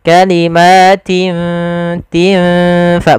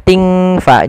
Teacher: Cara membacanya adalah kita samarkan huruf tin ya kepada huruf ta, seakan-akan kita langsung menghurufkan huruf fa. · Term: ikhfa